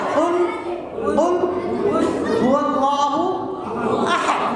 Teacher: কফটা উচ্চারণ হবে কোথার থেকে? কফটা উচ্চারণ হবে জিহ্বার গোড়া এবং তার বরাবর উপরে তালুর সঙ্গে লাগিয়ে